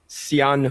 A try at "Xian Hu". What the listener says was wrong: There's no X. It's like Sean. It's like more like an S.